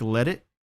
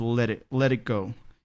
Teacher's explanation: it sounds like a d so it's like let it and I think he drops the T there in it so like let it you just stop the flow of air